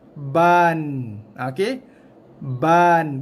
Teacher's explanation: Hujung lidah bunyikan n ni menyentuh kawasan atas gusi tempat tumbuh gigi tu. Tidak boleh menyentuh belakang gigi. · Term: bunyi n